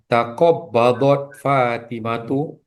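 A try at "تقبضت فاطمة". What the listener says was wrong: Taqabbadot, bagus ya.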